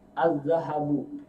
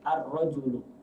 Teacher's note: Kalau yang syamsiyah ini lamnya tidak dibaca.